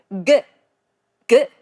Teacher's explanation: The first consonant is 기역. 기역 is a sound made by the root of the tongue blocking the throat. G, g. We call this a velar plosive.